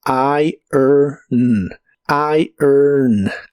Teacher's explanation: primero se pronuncia I después er con un sonido muy suave de e y luego el sonido n